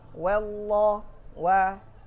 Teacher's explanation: Hamzahnya lafzul jalalah tak rusak lafaznya, sedangkan waw juga tidak mufakham.